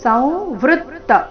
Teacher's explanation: ಅನುಸ್ವಾರದ ಉಚ್ಚಾರಣೆ ಈ ಶಬ್ದದಲ್ಲಿ ನಾಸಿಕ ವ ರೀತಿ